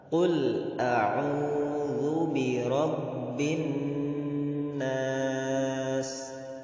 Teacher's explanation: Jadi didengungkan 2 harokat boleh, 3 harokat juga boleh. Itu ada perbedaan pendapat, karena ada yang menyebut 2 dan ada yang menyebut 3, karena ketika masuk pada rob itu sudah kepada kalimat bin nas, dari kasrah kepada nun itu sudah 1 harokat.